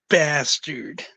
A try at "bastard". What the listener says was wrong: Not, like you're saying bass, but then you say turd.